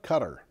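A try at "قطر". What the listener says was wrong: It's closer to Gutter. Close to it. The Arabic Q is almost a G. Almost.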